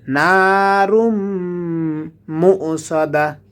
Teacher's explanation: মিমের উপরে তাশদীদ আসার কারণে গুণনা করে পড়তে হবে